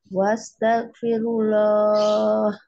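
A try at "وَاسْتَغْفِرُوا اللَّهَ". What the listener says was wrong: Wastaghfirullah. Bacaannya udah bagus ya, untuk lafaz Allah aja mungkin lebih tebal lagi.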